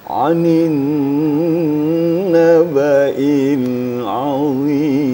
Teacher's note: Kemudian kalau Bayati nawanya sedikit ada loncatan.